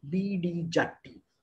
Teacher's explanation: So the j is basically an undoubled ch, and the t is a doubled d. Okay, so it is basically chaddi that came to Tamil and become jatti, and then the poor vice president had to face a lot of hilarity.